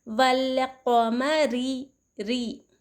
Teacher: रॉ के नीचे ज़ेर हो तो रॉ को बारीक पढ़ेंगे